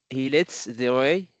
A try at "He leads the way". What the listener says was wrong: Leads, not lets. He leads.